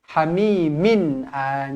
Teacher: Tanwin selari bertemu dengan hamzah. Izhar halqi dibaca jelas dan terang.